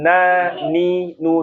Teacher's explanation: kalau nun itu persis di ujungnya bertemu dengan apa? bertemu dengan gusi.